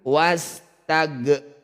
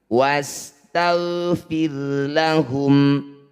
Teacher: Ghain sukun, bukan bacaan qalqalah. Tidak boleh dipantulkan.